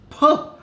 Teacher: when you start saying the word plum you literally have to expel air out · the first sound you get when you pronounce the word plum is per that plosive P